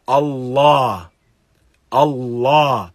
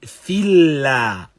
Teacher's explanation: Lam is mufakham. It is not recited lightly. Rather, it has this heavy, dense sound.